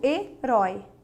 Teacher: Ela é uma oxítona formada por um ditongo aberto.